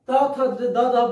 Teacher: त थ द ध दंत। जब आप त थ द ध बोल रहे हैं तो देखिए जीभ जो है ना वो दांत में टच हो रहा है